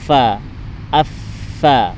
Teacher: Makhrajul huruf dari huruf fa yaitu bibir bawah nempel sama gigi atas. Bibir bawah nempel sama gigi atas.